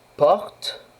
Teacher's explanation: porte, une syllabe fermée, donc on utilise la voyelle ouverte.